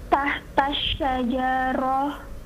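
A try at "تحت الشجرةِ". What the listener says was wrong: Hidupkan semua harakatnya. Tahta syajarati.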